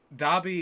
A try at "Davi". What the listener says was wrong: No, it's Davi with a V. It's almost like Davy, but it's pronounced Davi, I think.